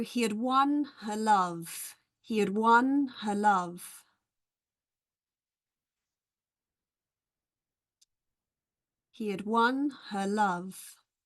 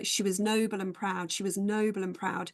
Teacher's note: students might notice that the auxiliary verbs are always weak